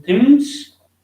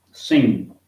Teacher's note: no English word begins with ng sound, but we can use it medially in things and finally in sing